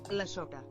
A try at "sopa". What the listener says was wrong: No, kind of said it like an O.